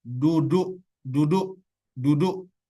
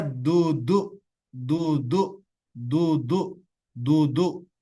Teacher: kalau dia huruf dal, berarti dia ujung lidah menyentuh bagian gigi seri atas yang bertemu langsung dengan bagian daging. Jadi da, da.